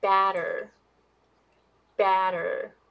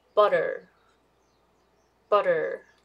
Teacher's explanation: since you open your mouth wider than schwa, the vowel here is much longer than the schwa sound